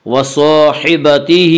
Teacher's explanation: وَصَاحِبَتِهِ، الف مدہ، الف ہمیشہ مدہ ہوتا ہے، الف سے پہلے ہمیشہ زبر ہوتا ہے، الف مدہ کو 1 الف کے برابر کھینچ کر پڑھیں گے۔ وَصَاحِبَتِهِ، ہا کے نیچے کھڑی زیر ہے، کھڑی زیر قائم مقام ہے یا مدہ کے، اس لیے کھڑی زیر کو 1 الف کے برابر کھینچ کر پڑھیں گے۔